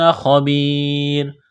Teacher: ایک الف کے برابر کھینچنا ہے، خا کو موٹا کرنا ہے، یا ساکن سے پہلے زیر ہے، حروف مدہ یا ہے، ایک الف کے برابر کھینچنا ہے